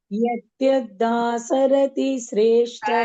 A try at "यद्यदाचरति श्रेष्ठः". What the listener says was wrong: सरति इल्ल चरति